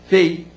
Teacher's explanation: Fei, uma pronúncia só, o i sai junto com o e. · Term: ditongo